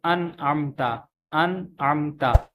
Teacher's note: جو نون ساکن ہے یہ ظاہر ہو رہا ہے، کیونکہ اس کے بعد حروف حلقی ہے، تو جب حروف حلقی آ جاتا ہے تو پھر یہ ظاہر ہوتے ہیں۔ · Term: اظہار